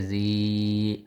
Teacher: یا کے اوپر جزم ہے، مطلب یا ساکن ہے، اس سے پہلے زیر ہو، اسے یا مدہ کہتے ہیں. اس کو ایک الف کے برابر لمبا کریں گے